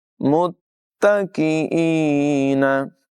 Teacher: मीम को ता के साथ मिलाएंगे और यहाँ पर मुशद्दद हरफ है तो ज़रा रुक कर अदायगी करेंगे। यहाँ पर हमज़ा की अदायगी होगी काफ के बाद और या मद्दा है, इसे लंबा करके पढ़ेंगे।